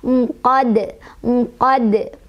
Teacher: dipantulkan dan pantulannya kubro besar ya.